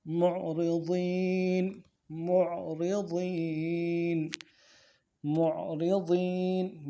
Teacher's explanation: عین کے ساتھ ملانا ہے عین میں آواز جا رہی ہے را کو نرمی سے ادا کریں گے را کے نیچے زیر ہے باریک پڑھیں گے ضاد کو یا کے ساتھ ملانا ہے یا لین ہے کھینچ